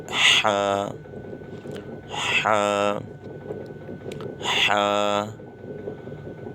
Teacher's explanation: حلق کے بیچ میں سے، یہ حروف حلقی ہے، حلق کے بیچ میں سے